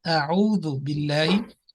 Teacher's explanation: On Ain and Ha, they are coming from the middle of throat, meaning the second part of the throat, and that part should be activated with more concentrated practice.